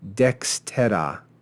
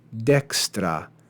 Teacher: This is an example of syncope. The vowel is omitted from the middle of the word.